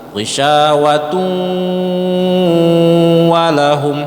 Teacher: idgham bi gunnah, dimasukkan dengan dengung. Jadi ditahan dulu. Hisyawatu walahum, agak lama tidak masalah, 2 sampai 3 harokat ya.